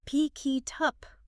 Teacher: A learner might hear pikey tup. The K from pick links to it, and the T from it links to up. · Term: linking